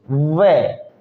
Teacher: तो व में होठ भी काम करते हैं और दांत भी काम करते हैं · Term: दंतोर